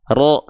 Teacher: huruf ro ketika dia berharakat fathah itu dibaca harus dengan keadaan yang tebal